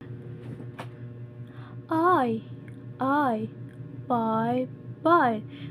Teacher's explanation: When you say i, tongue starts low and move higher toward the front